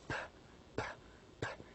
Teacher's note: Because if you try to pronounce P, P, P as a sound, you do not feel the vibration. So we consider P, the sound P, as voiceless sound because it has no vibration